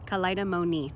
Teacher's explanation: the m with the with the um with the lips and the n again is um with the tongue behind the teeth up against the palate